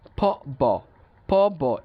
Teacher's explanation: যেমন দেখেন ফ ব, প ব, এই যে একটা কম্বিনেশন, উচ্চারণ করতে গেলে আমরা কি করি, ফ উচ্চারণ করতে গেলে আমরা দুইটা টুট ইউজ করি, ব উচ্চারণ করতে গেলে আমরা দুইটা টুট ইউজ করি, বাট দেখেন প ঠোঁটটাকে আমরা বন্ধ অবস্থায় খুলি, আবার ব খোলা অবস্থায় বন্ধ করি। সো দেখা যাচ্ছে একটার ক্ষেত্রে আমরা কি করছি, আমরা ঠোঁটটাকে মানে বন্ধ অবস্থায় খুলছি, আরেকটাকে খোলা অবস্থায় বন্ধ করছি।